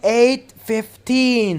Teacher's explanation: so you have to put the stress on 15 8:15 make 15 longer and louder